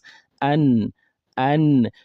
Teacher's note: the tip of the tongue touching the gum behind the two front teeth two front incisors. That is where we get the noon from.